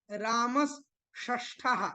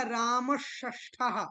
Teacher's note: तो रामस में जो सा था इसके बाद मूर्धन्य शकार आया, ये भी मूर्धन्य बन गया।